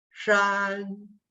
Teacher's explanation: the pitch has to be high and even it's even it's up in the sky you do not move · the tone, the pitch, has to be high and even. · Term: first tone